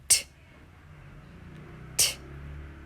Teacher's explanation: Place the tongue tip up, behind top teeth. Let tongue down with a puff of air, but no voice out from throat.